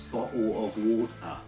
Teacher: many people in the UK use something called a glottal T, where it sounds like there's no sound that comes out.